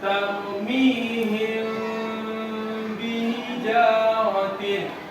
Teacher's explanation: Suara mim sukunnya tidak terdengar jelas seperti ini. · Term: ikhfa safawi